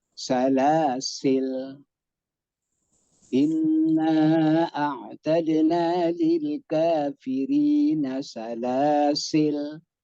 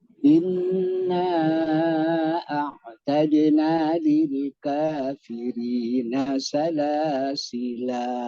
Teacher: Jaza madduhu, jaza boleh, madduhu dibaca panjang.